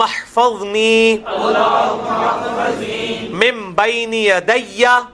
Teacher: یہ وہی اقلاب آ گیا, نون ساکن کے بعد با ہے تو نون میم میں بدل جائے گا